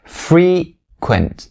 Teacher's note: the first syllable, it has the E sound, the long E sound. But the second one is going to be the primary stress.